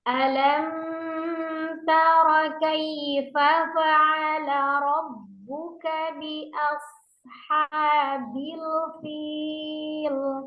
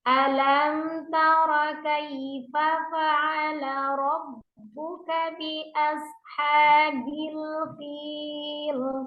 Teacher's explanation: Seharusnya diizharkan ya, tidak dipanjangkan gunnahnya.